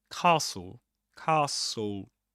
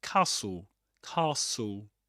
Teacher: You don't pronounce the t, right?